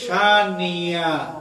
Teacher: যখন হামজা আর হামজা থাকে না এটা ইয়া হয়ে যায়